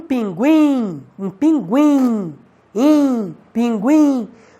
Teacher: Observe que o I é mais forte, tanto que daria até para você colocar um acento hipotético em cima do I, o que prova que o I é uma vogal e o U é uma semivogal.